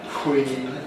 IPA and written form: kwiːn (queen)